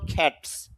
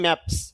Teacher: যদি কোনো শব্দ এক সিলেবল বিশিষ্ট হয় এবং ভয়েসলেস সাউন্ড দিয়ে শেষ হয়, ভয়েসলেস সাউন্ড 9টি, এগুলো জানার প্রয়োজন, তাহলে এস যোগ করলে সেটি স মানে দন্তস্বর মতো উচ্চারিত হয়। এখানে এস ঠিক আছে, কিন্তু আইপিএস সিম্বল হিসাবে এটা স।